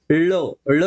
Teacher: बाहेर पडतो ळ ळ चा उच्चार करत असताना पाहू शकतो मित्रांनो आपली जीभ वाकडी होऊन आपल्या कंठ म्हणजे तालव्याला जाऊन भेटते